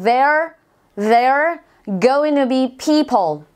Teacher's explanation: There và are nối lại với nhau